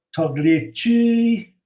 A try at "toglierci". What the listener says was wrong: Togliere. You don't pronounce the G, do you?